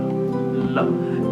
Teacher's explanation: When you produce the sound, the tip of tongue touches against the upper gum ridge, and then we produce the sound l. And if we hold the throat with our hand and we produce the sound again, we find l. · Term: lateral alveolar